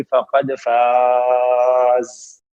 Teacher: فقد فاز، فقد فاز پہ جب وقف کریں گے تو الف مدہ کے بعد عارضی سکون آ جائے گا، مد عارض سکون بنے گا، 4 سے 6 حرکات ہوں گی